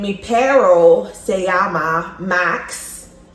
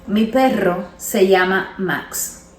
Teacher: because the double R's requires an emphatic rolling of the tongue